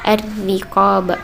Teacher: Yang ketiga yaitu huruf ra dibaca tarkik atau tipis, sebab ra-nya berharakat kasrah